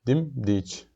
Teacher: Gördüyünüz kimi enən formada gedib. Amma ikinci heca birinci hecəyə nisbətən daha qüvvətli formada deyilib. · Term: vurğu